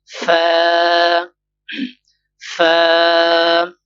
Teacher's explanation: اوپر کی دانتوں کی جو کنارے ہے اور نچلے ہونٹ کی تر حصہ سے ادا ہوتے ہیں